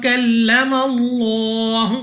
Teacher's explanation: Next हमारे पास लाम ऑफ अल्लाह से पहले हर्फ पर जबर है, तो ये लाम ऑफ अल्लाह को पुर पढ़ने की एक सूरत है। तो यहाँ पर आपने लाम ऑफ अल्लाह को पुर यानी मोटा पढ़ना है